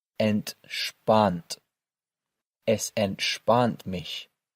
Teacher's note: Notice how the letter S is pronounced with a sh sound again here.